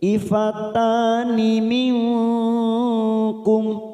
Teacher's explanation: nun sukun bertemu kaf, namanya bacaan ikhfa abad atau diringkas menjadi 1 ikhfa hakiki. Minkum kita samarkan 3 ketuk. Minkum mim sukun bertemu hamzah, namanya bacaan idhar safawi, kita baca jelas tanpa mendengung.